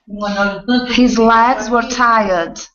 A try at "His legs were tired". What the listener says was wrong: Okay, almost. You don't want to drop the mouth so much. So you're saying legs. Instead of legs, it's legs. Yeah, it's a shorter vowel sound. So instead of wide, because you can do that very, very well, opening, giving a good vowel sound. But with that short e, it's shorter. Le.